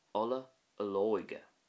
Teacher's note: you see more emphasis on the ó towards the end